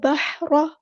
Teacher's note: simple ہا بھی نہیں ہے، مڈل تھروٹ سے ادا ہوگا